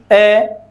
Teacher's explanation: हम बोलते हैं ए, होठ गोल नहीं हुए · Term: अवृत्ताकार